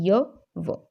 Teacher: आगे संघर्षहीन या अर्ध स्वर, तो ना तो पूरे व्यंजन है ना ही पूरे स्वर है, कि जिन व्यंजनों के उच्चारण में वायु बिना रगड़ खाए बाहर निकलती है तो उन्हें संघर्षहीन व्यंजन कहा जाता है